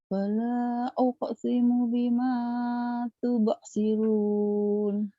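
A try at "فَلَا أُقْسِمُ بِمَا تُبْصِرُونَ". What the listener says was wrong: fala bukan wala ya. Fala. Ayo ulang lagi. Fala.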